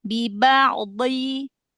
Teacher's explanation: dot mundurkan lagi ya, jangan seperti dal ya, yang di ujung lidah kan hanya menempel aja, tapi yang ditekan yang sisinya ya, sisi kanan atau kiri atau keduanya. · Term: huruf dot